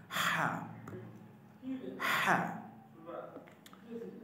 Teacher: মনে যেন গলা থেকে একটা আওয়াজ বের হচ্ছে, একটা শোষা আওয়াজ হচ্ছে, বাতাস বের হচ্ছে। · হা হলকের মধ্যখান থেকে উচ্চারিত হয়, হলকের মধ্যখান থেকে উচ্চারিত হয় হা।